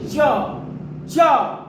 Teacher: और जब चा छ ज झ इया बोलेंगे, आसानी से बोलिए च च, तो ताल कहीं ना कहीं ये तालू से निकल रही है आवाज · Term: तालव्य व्यंजन